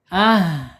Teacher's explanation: Ha makhrajnya ada di bawah tenggorokan. Kemudian secara sifatnya ada di alhams. Alirkan napasnya ketika H ini sukun. Ah gitu. Alirkan ya.